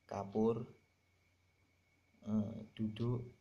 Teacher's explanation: Yang huruf yang kedua yang mempengaruhi yang termasuk vokal tinggi bawah yaitu huruf U. Huruf U yang mengarah ke O, seperti kapur, duduk, itu kan lebih mengarah ke O